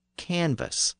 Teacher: earlier version of the word cannabis had passed through French and the B sound in the middle had shifted to a v sound